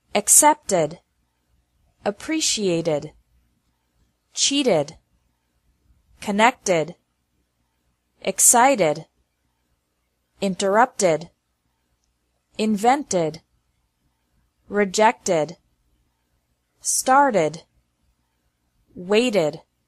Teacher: the second pronunciation of e d is like e d with an extra syllable after verbs ending with a t or d sound